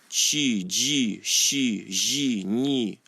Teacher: the way you pronounce them is your tongue, or the back of your tongue, almost touches the roof of your mouth. So instead of ts, you say chi. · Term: soft consonants